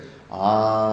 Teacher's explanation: ಬಾಯಿ full open ಮಾಡಿಕೊಂಡು ಒಳಗಡೆಯಿಂದ ಪ್ರಾಣವಾಯು ಹೊರಗಡೆ ಬಿಟ್ಟರೆ ಆ ಅಂತ ಬರುತ್ತೆ.